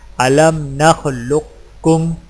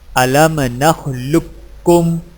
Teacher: Number 2، دوسرا طریقہ یہ ہے کہ قاف کے موٹے پن کو ظاہر کرنے کے فوراً بعد کاف باریک ادا کریں، یعنی اس طرح الم نخلقکم۔